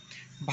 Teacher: स्पर्श, ओष्ठ, महाप्राण, घोष व्यंजन।